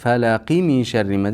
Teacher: Ammo bog'lab o'tib ketsak qalqala bo'lmaydi.